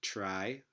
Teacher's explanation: Words like try clearly have a post-alveolar stop sound here, or affricate sound. This is not terai, it's try in most varieties of American English.